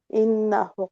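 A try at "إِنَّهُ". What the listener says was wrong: ইন্নাহু টান হবে, ইন্নাহু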